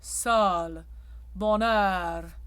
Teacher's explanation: The OE in French is very open.